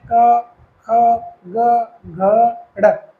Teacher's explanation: जब भी आप बोलने का प्रयास करें क, ख, ग, घ, ढ, जब आप उसको बोलते हैं तो अगर ड़ को आप छोड़ दें तो कहीं भी आपकी जुबान का जो प्रयोग है वो बिल्कुल कम हो रहा है, केवल गले से आपकी आवाज़ निकल रही है। ड़ नासिके में आता है, इसलिए थोड़ा सा जुबान का प्रयोग, आपको जीवा का प्रयोग करना पड़ता है। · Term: कंठे